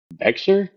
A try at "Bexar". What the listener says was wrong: It's It's actually pronounced Bear. The X is silent.